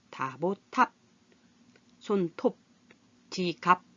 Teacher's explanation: 그래서 밤 이렇게 머리도 훈련하면서 우리 말의 발음 원리도 이해를 하면서 하시면 훨씬 재밌고 신기하다 이렇게 생각하실 겁니다. 이번에는 비읍, 입술 소리인데 읍 하고 닫히는 소리 중에 콧소리가 아닌 소리가 있어요.